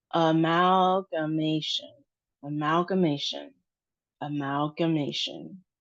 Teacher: we have the emphasis on the ma sound, and it's a long a sound, -ma- -tion.